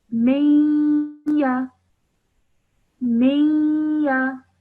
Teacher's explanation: So this says if ya mushaddad appears after noon sakin, idgham will take place with a 2-second nasal sound. So when I join the meme to the ya, I do so with a 2-second nasal sound in between. · it's a slight nasal sound coming from your nose, but I'm not producing a solid noon sound